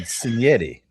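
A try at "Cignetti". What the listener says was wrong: It's Signetti. You said Signetti.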